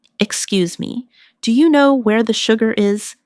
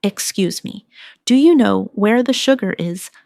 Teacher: Notice how do you change to dia?